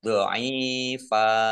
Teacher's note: fathah tanwin alif karena waqaf dibaca fathah dan panjang 2 harokat. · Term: mat iwad